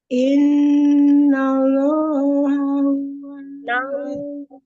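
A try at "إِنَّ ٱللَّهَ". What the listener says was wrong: Lamnya kan ditebalkan itu kan. Lam jalanya tebal ya.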